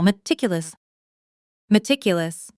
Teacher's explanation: Now at natural speed, with the stress on the second syllable, meticulous.